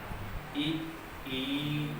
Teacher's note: ई को बोल देखिए, जीभ का अगला भाग फैलेगा। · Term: अग्र स्वर